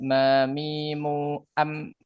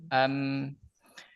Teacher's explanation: Huruf mim itu memiliki sifat tawas ya. Jadi tidak tertahan.